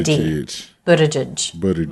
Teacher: the T is a flap T which is normal for a T between vowels in American English it sounds like the date Buddha tidge Buddha and the G